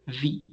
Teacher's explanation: if you touch your throat you're going to feel vibration with the letter v